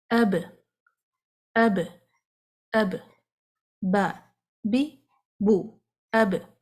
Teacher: جب آپ با کو سکون سے ادا کریں گے تو دونوں ہونٹ آپس میں سٹک ہو جائیں گے، رک جائیں گے، آواز رک جائے گی، منہ میں ٹریپ ہو جائے گی، اس کو باہر نکلنے کا کوئی راستہ نہیں ملے گا. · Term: قلقلہ